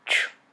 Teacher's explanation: represent an affricate, a combination of a stop or a plosive and the continuant sh.